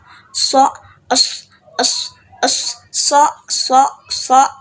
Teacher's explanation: itu terjadinya hambatan diantara ujung lidah dan gusi jadi dia ada hambatan disaat mengeluarkan sih bunyi sok tersebut seperti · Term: apiko alveolar